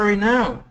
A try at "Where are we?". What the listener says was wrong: Give me more W on the we. Where are we?